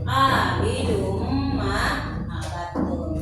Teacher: Hukum bacaan idgham bigunahnya yaitu abidum, kan tadinya abidun, ya. Tadinya huruf N. Nah, ditarik menjadi mendengung menjadi abidum ma abattum.